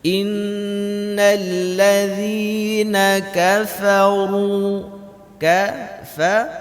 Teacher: kafaru, dibaca tebal. Kenapa? Karena ra di sini baris bengkok.